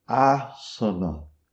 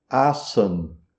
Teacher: O primeiro A é longo, os outros dois A são curtos, mas todos os A existem. Enquanto que se você pronuncia em rinde, você vai dizer assan, você engole o a final. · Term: a longo